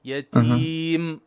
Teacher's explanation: Wait, don't breathe after the meme, otherwise you're adding a ha.